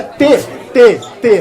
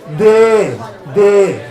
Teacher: Se aqui é T, não vibra. D, começa a vibrar